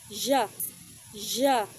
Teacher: J is a voice sound. So your vocal cords are vibrating. · It begins like a D sound, but then quickly turns into the sound you hear in the middle of measure, which is J. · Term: voiced post-alveolar affricate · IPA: /ʤ/